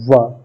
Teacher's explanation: व, दांत और ओष्ठ को मिलाकर के बोली जाती है। देखिए, व तो जीभ का अग्रभाग दांत के ऊपरी दांत के आंतरिक भाग से टच होता है और हमें मुंह को मतलब कि ओठ का भी प्रयोग करना पड़ता है, तो दंतोष्ठ इसको बोलेंगे।